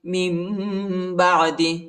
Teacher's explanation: نون کے بعد جو ہے با آیا ہے، ادھر ہم اقلاب کریں گے، ٹھیک ہے، میم کی آواز نکالیں گے اور اخفا بھی کریں گے